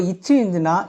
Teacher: நாவின் இடைப்பகுதி நடு அண்ணத்தின் இடைப்பகுதியை பொருந்துவதால் பிறக்கின்றன